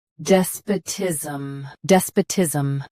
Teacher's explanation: Both US and UK have the same pronunciation of this word. Stress d. Keep sp soft, then tism clear.